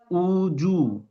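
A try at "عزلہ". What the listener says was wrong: না এটা সাকিন উজ এটা পেশ এটা সাকিন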